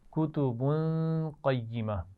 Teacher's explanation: با پر تنوین ہے اور اس کے بعد قاف ہے. حروف حلقی بھی نہیں ہے، لام اور را بھی نہیں ہے، تو یہاں پر غنہ ہوگا. قیمہ میں قاف کو موٹا پڑھیں گے.